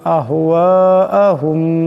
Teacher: আহওয়াহুম এখানে মিম সাকিনের পরে বা আছে, এই মিম সাকিনকে গুণা করে পড়তে হবে, একালি পরিমাণ গুণ হবে।